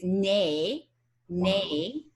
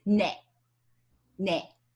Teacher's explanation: But nowadays, the pronunciations are actually converging, and they're both pronounced more like the shorter vowel quality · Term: sound change